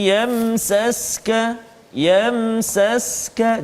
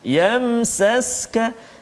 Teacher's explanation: Yamsaska, mim mati bertemu dengan sin. Jadi izhar syaf, jelaskan bacaan kita, tak boleh dengung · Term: izhar syafawi